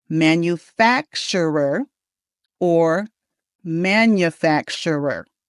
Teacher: This is a long word and it has five syllables and the actually the stress goes in the middle. All right, the stress is on fact and we say the word manufacturer